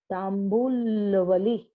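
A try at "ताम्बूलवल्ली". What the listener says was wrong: Not Vali. It is Valli. Not Tambul. Tambula Valli.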